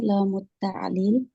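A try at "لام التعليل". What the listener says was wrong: Lamut ta'lili, harokat akhir jangan ditinggal.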